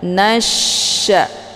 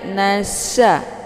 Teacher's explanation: nunnya langsung dileburkan ke dalam huruf Sya Nasya dengan cara ditekan dan Sya ini dia sifatnya tafasi jadi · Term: alif lam asyamsiah